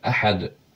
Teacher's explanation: Burada ə incədir, qalın deyil, həm də uzun deyil.